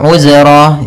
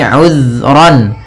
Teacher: Hati-hati dalam lafal zal. Usahakan ya. Usahakan di sini jangan sampai memantul. Jangan uzro gitu ya.